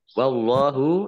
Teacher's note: Allahnya dibaca tebal karena harokat di depannya fathah. Lam fathah berdiri mat tabi'i panjang 2 harokat.